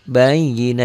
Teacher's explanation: Hatta ta'tiyahumul bayyinah, ini tak marbutoh karena dihentikan bunyinya berubah menjadi ha